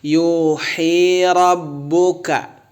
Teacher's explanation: Yuhi rabbuka, ka keluar napas